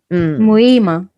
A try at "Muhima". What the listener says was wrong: Muhima. Muhima. Forget the H. Muhima. H is silent.